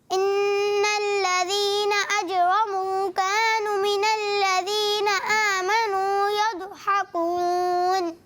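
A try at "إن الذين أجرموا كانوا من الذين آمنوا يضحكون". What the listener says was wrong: کانو الف مدہ اور واو مدہ. آپ کا واو مدہ تھوڑا چھوٹ گیا ہے نا, تو کوشش کرنا ہے الف کو بھی کھینچنا ہے, کا اور نو ایک ایک الف.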